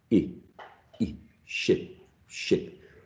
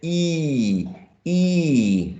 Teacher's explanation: When you produce this one, this sound, your lips are more tense, E, as if you are smiling. So if you smile and you say E, E, that's the vowel sound that you have to use when you produce sheep.